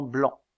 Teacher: le a postérieur nasalisé comme dans blanc